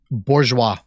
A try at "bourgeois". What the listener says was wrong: Ooh, I heard an R in there that time. Bourgeois. Bourgeois. Bourgeois. Bourgeois. Burjua.